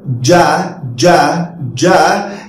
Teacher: you put your finger here and say or ja ja ja you can find that your vocal chords vibrate there is a vibration on your vocal chords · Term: voiced